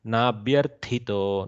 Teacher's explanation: To is going into Mahaprana in your mouth. The first tha, attack tha has to go into Mahaprana.